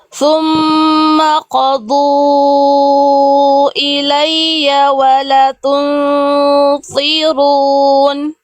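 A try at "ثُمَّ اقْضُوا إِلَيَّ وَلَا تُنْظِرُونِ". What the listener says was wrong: Wala, la-nya 2 harokat ya. La-nya 2 harokat. Bunda baca la-nya 1 harokat. Fathah ketemu alif, la-nya 2 harokat ya.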